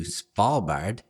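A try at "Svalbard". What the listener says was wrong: It's Spall with a V.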